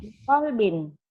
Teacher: Binnya bukan idhar tapi ikhfa. Biqalbin bindeng.